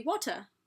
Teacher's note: Somebody from Britain would actually pronounce that T, even though we take it for granted that it's kind of not really a T sound. To them it'd be water, you know?